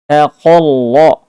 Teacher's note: taqalla qafnya tebal, ra-nya tebal